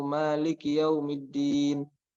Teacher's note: Dal yang bertasydidnya belum sempurna, masih terdengar satu dal saja. Nah, harus ditekan sedikit.